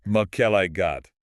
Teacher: the primary stress lands firmly on the el and then you finish with a hard undeniable got.